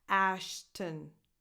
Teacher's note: Just go from the T to the N because there's just a small schwa in between, but it will just come out naturally without you having to do anything.